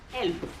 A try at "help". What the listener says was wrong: No, actually, it's help. You see there's an H there? No, the H isn't silent. It makes a sound. So here it's help, not help, okay? It makes a sound. Help, okay?